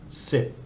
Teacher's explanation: if we look at the tone rules for high class initial consonant dead syllable short vowel we get a low tone